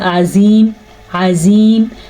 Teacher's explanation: عین کو واضح کریں اور زوا کو پور کر کے پڑھیں